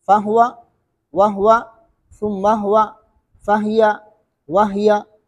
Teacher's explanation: ہا کو ساکنہ پڑھتے ہیں دونوں راوی